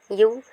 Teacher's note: மேல்வாய் பல்லை கீழ் உதடு பொருந்துவதால் பிறக்கின்றது